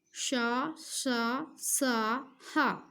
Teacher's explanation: इन व्यंजनों के उच्चारण के समय मुख से वायु के बाहर निकलते समय वायु के रगड़ खाने में ऊष्मा उत्पन्न होती है अर्थात गर्मी उत्पन्न होती है ऊष्म व्यंजन में।